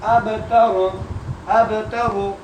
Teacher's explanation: با پہ قلقلہ کرتے ہوئے پڑھیں. اب، کیونکہ با رفع قلقلہ میں سے ہے.